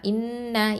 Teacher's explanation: அடுத்ததான் ஹம்சா கெஸ்ரா நூன் ஷத்தா இன், நூன் ஃபதான்னா இன்ன. இந்த இடத்துலையும் நூன் ஷத்தாக்கு நம்ம முழுமையாக குன்னா கொடுக்கணும், அக்மல் குன்னா